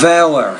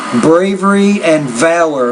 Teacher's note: Put stress on the first syllable, not the second.